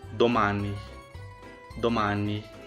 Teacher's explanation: amor ano de amor significa Vamos então perceba que nessas palavras eu abri bastante o som da letra a e não fiz o som nasal como brasileiros pronunciam